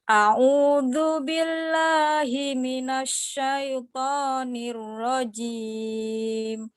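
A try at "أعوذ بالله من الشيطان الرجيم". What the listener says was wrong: A'u-nya masih belum sempurna. A'udzu. Habis itu zalnya itu lidahnya diletakkan di situ. Di antara gigi seri, zu.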